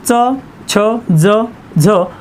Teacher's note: तालव्य वर्णामध्ये जो काही गट आहे तो च छ ज झ